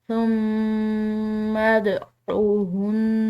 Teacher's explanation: ہے، اس پر غنہ کریں گے، اور اس کے بعد جو دال آ رہی ہے یہ حروف قلقلہ میں سے ہے، تو اس پر ہم قلقلہ کریں گے، اس کو ہلا کر ادا کریں گے